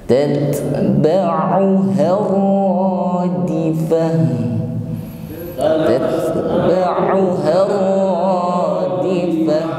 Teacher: huruf ta ini memiliki sifat hamas ya, ada nafas yang mengalir ketika mengucapkannya ya. Dan ketika bersukun maka lebih tampak sifatnya, yaitu hamas ya.